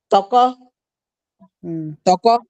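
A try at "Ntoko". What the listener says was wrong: Non, c'est pas T directement, c'est NT donc c'est T. Toko.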